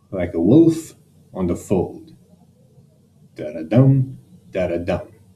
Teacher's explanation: there are two unstressed syllables followed by a stressed syllable